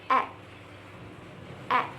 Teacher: Finally, A is a voice sound, meaning your vocal cords vibrate when you produce it. · it is a front vowel. That means the front part of your tongue, not the tip, is raised toward the hard palate, which is near the front of your mouth. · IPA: /e/